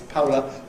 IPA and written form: ˈpʌʊlə (polar)